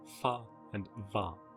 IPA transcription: fa and va